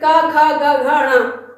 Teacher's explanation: गले से निकलती है, तो इसे हम क्या कहेंगे? कंठ स्पर्श व्यंजन कहते हैं।